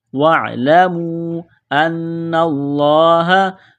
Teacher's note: نون مشدد پر غنہ کریں گے، آواز ناک میں چھپائیں گے ، لفظ اللہ کے نام سے پہلے زبر ہے، لفظ اللہ